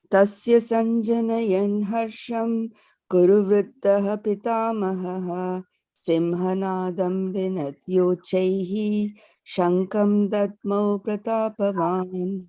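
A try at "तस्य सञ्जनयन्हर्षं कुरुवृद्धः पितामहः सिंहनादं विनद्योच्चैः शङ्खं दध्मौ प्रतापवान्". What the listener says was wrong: Very nice.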